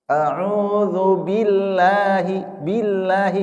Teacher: karena ada bi kasrah maka lamnya dibaca tarqiq dibaca tipis ya. Tapi kalau sebelumnya dommah atau fathah, fathah misalnya Allah ya, maka dia lidahnya itu yang berfungsi adalah lidah bukan wawu, bukan bibir, bukan Allah, bukan tapi Allah.